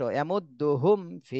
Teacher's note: গুন্না করতে হবে ওয়ামাহুম বিমিনিনা ওয়ামাহুম বিমিনিনা এরপরে ইয়ামুদ্দুহুম ফি এখানে মিম সাকিনের পরে বা আর মিম কোনটাই নেই ফা আসছে এজন্য এখানে স্পষ্ট